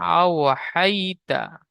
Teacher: ওয়াও লিনকে নরম আওয়াজে তাড়াতাড়ি পড়তে হবে, টান দেওয়া নিষেধ।